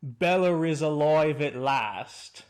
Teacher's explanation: he speaks English with a modern British accent complete with an intrusive R when he says quote Bella is alive at last after all